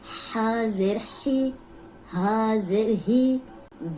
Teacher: حلق کے درمیانی حصے سے نکل رہا ہے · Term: حروف حلقی